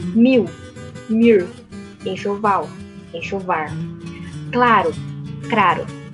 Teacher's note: a rotatização do L, que é a permutação em final de sílaba